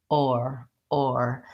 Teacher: you kind of have the O shape and then you just tighten up the tongue into the or